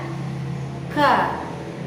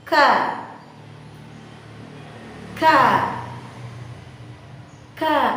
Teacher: Selain keluarnya nafas, ka terdapat suara yang ditahan atau tertahannya suara. Ka, suara itu tidak semerta, tidak senantiasa keluar atau mengalir begitu saja, tetapi di situ ada penahanan. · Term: hams